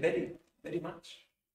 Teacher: pero en español la V es bilabial, igual que la B.